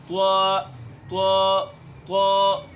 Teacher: دوسری غلطی اس میں یہ کرتے ہیں کہ اس میں جو اکثر لوگوں کو سمجھ بھی نہیں آتی ہے، ان کو معلوم بھی نہیں ہوتا کہ ہم غلط پڑھ رہے ہیں، وہ اس میں غلطی بڑی یہ کرتے ہیں کہ اس میں واو کی طرف اس کو مائل کرتے ہیں، ہونٹوں کو گول کرتے ہیں